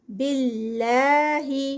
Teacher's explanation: اللہ کے نام سے پہلے زیر آ گئی ہے تو یہ لائٹ پڑا جائے گا